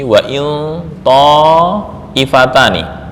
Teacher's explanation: Wa in nun ini sudah dibaca dengan tafkhim. Kenapa? Karena setelah nun sukun berupa huruf isti'la